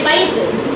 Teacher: If we do rapid speech, we say países. That S between vowels become a voiced S, okay? It's voiced. And then that happens in rapid speech.